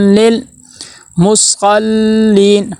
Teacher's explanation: پھر آگے میم کے اوپر پیش ہے، ہونٹ گول ہوں گے، پیش کو ادا کرتے ہونٹ گول ہوتے ہیں۔